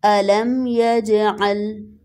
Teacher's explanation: یجعل میں جیم کو کلکلا کریں گے